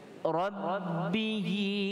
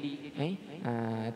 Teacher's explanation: Kemudian Rabbihi, ha di situ dibaca dua harakat dengan mad sillah.